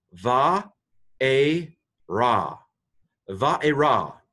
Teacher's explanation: the aleph is quiescent. It just kind of goes silent. So this is, to pronounce it, va-e-ra.